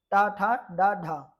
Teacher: यह आपकी मूर्धन्य ध्वनियां हैं क्योंकि आपकी जीभ आपकी मूर्धा से इसमें स्पर्श करती है।